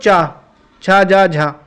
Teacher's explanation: चा वर्ग दोस्तों हमारा तालव्य होता है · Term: तालव्य व्यंजन